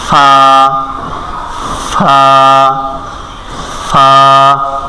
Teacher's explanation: ফা বলে ফা ফা বলে এখানে হবে ফা নিচের ঠোঁটের পেট নিচের ঠোঁটের পেট সামনের উপরের দাঁতের আগার সঙ্গে লাগাইয়া